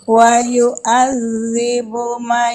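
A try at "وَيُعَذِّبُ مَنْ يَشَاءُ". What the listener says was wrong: panjangin dong. panjang dong. panjang, didengar panjang lama itu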